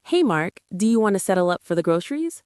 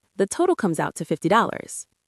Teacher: The pitch of your voice needs to lift slightly at the very end of the sentence. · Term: upward intonation